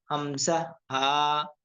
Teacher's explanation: এক এক নম্বর মাখরাজ হলকের শুরু হইতে